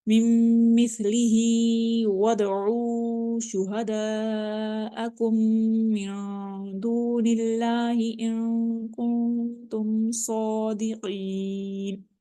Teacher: دال کے اوپر ہم قلقلہ کر رہے ہیں، یہ قلقلہ حروف میں سے ہے، ساکن ہے، اس لیے ہم اس میں قلقلہ کریں گے. · میم مس سا بالکل یہ وائس لیس لیٹر ہوتا ہے، سافٹ لیٹر ہوتا ہے لیکن وائس لیس ہوتا ہے، اس کی بالکل آواز نہ ہونے کے برابر ہوتی ہے. مثلی ہی ہا کو ہم اسٹریچ کریں گے ون فنگر چونکہ اس کے نیچے کھڑی زیر ہے